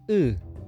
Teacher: não é um U arredondado como no português